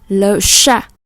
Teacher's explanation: âm CH này là âm sh, cong lưỡi